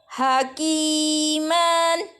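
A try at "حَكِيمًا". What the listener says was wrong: Jangan ditahan ujungnya.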